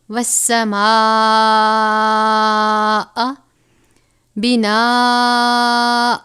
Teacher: الف کے برابر پڑھیں گے، والسماء بناء، اب یہاں پر بھی الف سے پہلے زبر اور بڑی مد ہے، 5 الف کے برابر پڑھیں گے